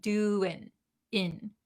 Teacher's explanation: The ing has a kind of nasally sound, ing. But when we're talking very quickly, we skip the nasal sound and we just say doing, in.